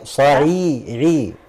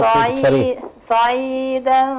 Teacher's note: عايزك ترقق العين كمان شويه